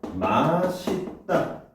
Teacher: 이 맛있다 같은 경우는요, 이 시옷이 그대로 연음이 되죠. 올라온단 말이에요.